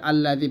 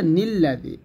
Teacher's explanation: এই নুনকে লামের সাথে ধরবে, আলিফ আর জবর দেওয়ার দরকার নেই